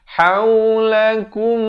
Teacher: di sini mim mati bertemu mim idgham mislan saghir didengungkan 2 harakat